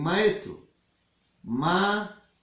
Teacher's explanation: Están unidas las dos vocales, pero se pronuncian separadas.